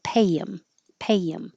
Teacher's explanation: So the H disappears on him and we connect the Y.